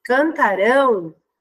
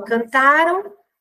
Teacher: final então eu digo sempre assim cantarão muda a tonicidade né então a sílaba tônica é a última sílaba então a palavra ela é oxítona e cantaram a sílaba tônica é a penúltima ela tá então existe mudança de sílaba tônica né então cantaram